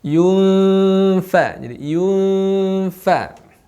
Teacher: ketika samar, posisi gigi itu sudah langsung menempel di bibir kita bagian dalam. Bibir bawah tentu saja. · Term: ikhfa